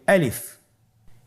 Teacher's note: আলিফ হরফটি মাখরাজ হলো আপনার মুখের শূন্যস্থান থেকে গলা এবং মুখের শূন্যস্থান হতে আলিফ হরফটি উচ্চারিত হয়